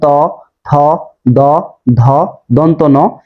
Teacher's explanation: এই ধ্বনিগুলো উচ্চারণের সময় অবশ্যই জিহ্বা দাঁতকে স্পর্শ করতেছে। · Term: দন্ত ব্যঞ্জন